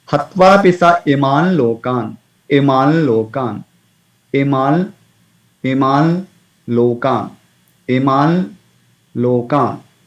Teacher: So it should be pronounced using nose. It's a nasalized sound. Not much effort. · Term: Chandrabindi